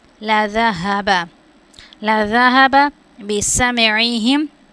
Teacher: زال کو نرمے کے ساتھ ادا کریں گے اور ہا کو موٹا کر کے پڑھیں گے.